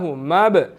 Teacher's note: با یہاں پر قلقلہ حروفوں میں سے ہے، قلقلہ کریں گے